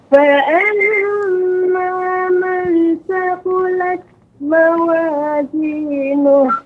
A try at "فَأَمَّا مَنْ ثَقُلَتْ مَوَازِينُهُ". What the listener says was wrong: Ya, untuk ikhfa-nya masih kurang panjang sedikit, ya, Ibu. Nun bertemu dengan za. فأما من ثقلت موازينه. Ya Ibu, untuk ikhfa tidak boleh kita mengucapkan jadi nun man, tidak, bukan fa'amma man sa, tidak, akan tapi nunnya jadi samar, ya, kita samarkan fa'amma man sa.